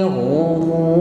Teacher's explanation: ra di sini bunyinya bergetar namun tebal, karena sebelumnya ada harokat dhammah.